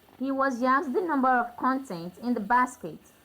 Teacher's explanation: So the stress is on the first syllable to show that it's a noun.